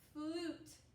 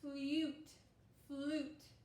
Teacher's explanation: the U normally doesn't totally say its name. It makes the sound oo, like oo, oot, more than it says an actual U.